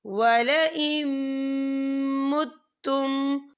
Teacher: تو یہاں پر ادغام ہوگا، تو ہم اسے غنے کے ساتھ پڑھیں گے۔